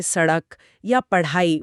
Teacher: जीभ में कुछ अलग सा महसूस होता है। बिल्कुल, जीभ पहले उल्टी होकर तालू को छूती है और फिर झटके से नीचे की तरफ गिरती है। ऐसा लगता है जैसे किसी ने जीभ को बाहर की तरफ फेंक दिया हो। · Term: उत्क्षिप्त